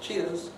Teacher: And it's typically pronounced with a kind of shallow fall.